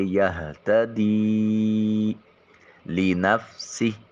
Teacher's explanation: یہتدی لنفسہ فا کی ادائیگی کے وقت سامنے والے دو دانت جو اوپر والے ہیں وہ نیچے والے ہونٹ کے شکم سے ملیں گے۔ سین حرف صفیریہ ہے، سی ٹی کی آواز آئے گی